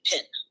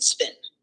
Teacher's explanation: the aspirated P with the puff of air occurs at the beginning of a word